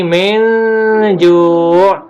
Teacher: Jim bukan termasuk huruf yang keluar dari tenggorokan, berarti dia bukan izhar. Min, dia juga tidak bisa dimasukkan bunyi nunnya ke dalam bunyi jim, tetapi hanya disamarkan, berarti dia ikhfa.